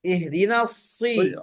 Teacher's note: Kemudian ihdinas siratal, huruf shad itu pangkalnya naik.